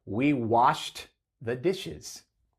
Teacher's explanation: el verbo Wash que termina con h una consonante sorda y por eso Ed suena como t